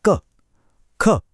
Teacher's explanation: यह आवाज सीधे गले से आ रही है। बिना जीभ या होठों की ज्यादा मेहनत के।